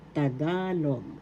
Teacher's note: Second syllable is the accent.